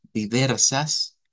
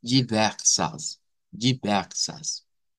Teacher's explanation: nótese el cambio en la a del final que no es como la a del español